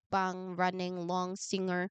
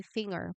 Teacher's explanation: In singer, it is a pure nasal, but in finger, many speakers add a faint g sound after it. So you do not say finger, but finger, and you didn't say singer, but singer.